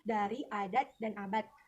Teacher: Konsonan D dapat menduduki semua posisi, contohnya dari, adat, dan abad. Namun, pada posisi akhir fonem D lazim dilafalkan sebagai bunyi T